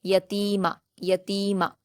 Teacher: ता पर या मद्दा है दो हरकात खींचेंगे